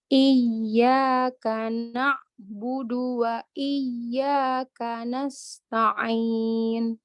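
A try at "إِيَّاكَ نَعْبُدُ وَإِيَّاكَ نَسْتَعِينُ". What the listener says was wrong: Ya, mat arid li sukunnya kurang, Mbak. Terus kurang panjang. 4 ya.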